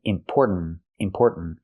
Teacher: the tongue goes up and makes a stop T at the end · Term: T sound